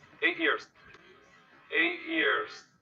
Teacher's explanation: Vejam que o T emendou com o som de vogal da palavra seguinte.